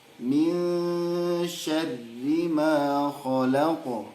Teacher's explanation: Fasbir soberong, karena antara fasbir dengan soberong itu beda kata, ya, gitu. Ya, kalau kasroh tetap tipis meskipun itu ro, ya, meskipun tasydid.